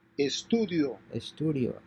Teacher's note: concentrate on combining the two vowels into a single syllable